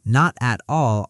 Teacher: Not at all often sounds like one smooth piece, almost note at all. That's called linking, when the end of one word connects straight into the next.